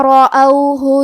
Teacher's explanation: کلمت رأوہ میں یہاں حرف الراء کا حکم ہے تفخیم کیونکہ اس پہ زبر ہے، لہذا ہمیں حرف الراء کو موٹی آواز میں پڑھنا ہے